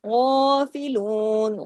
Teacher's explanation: غائن کو ہیوی بھی کرنا ہے، غائن کو الف کے برابر کھینچنا بھی ہے، باقی تمام باریک حروف ہیں، باریک پڑے جائیں گے۔